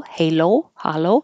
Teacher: starting with uh and moving to ooh o has two parts